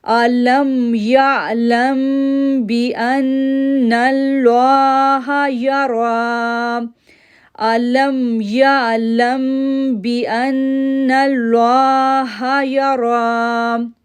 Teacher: اب دیکھیں یہاں پر ہم نے اغفا میم ساکن کا رول اپلائی کیا اور ہم نے 2 سیکنڈ کے لیے غنہ کیا، پھر نون تشدید ہونے کی وجہ سے اس پر ہم نے غنہ کیا، پھر نون کو جب لام کے ساتھ جوڑا تو نل لوہ، لام کو پورا آواز پڑا کیونکہ اللہ کے نام سے پہلے نون پر زبر ہے. · را کو پورا آواز پڑھا کیونکہ را کے اوپر جو ہے وہ کھڑی زبر ہے